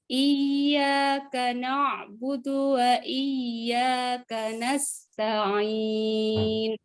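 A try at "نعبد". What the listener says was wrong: Dalnya jangan na'budu ya, na'budu. Dal Arabia.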